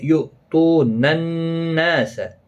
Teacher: نون مشدد پر غنہ ہوگا، الف مدہ بھی ہے، ایک الف کی مقدار کے برابر کھینچیں گے بھی۔